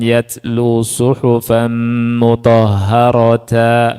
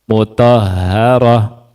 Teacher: tamarbut ketika di fathatain tidak dikasih alif dalam tulisan sehingga dibacanya ha sukun